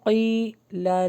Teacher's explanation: یا مدہ ہے لانگ ہوگا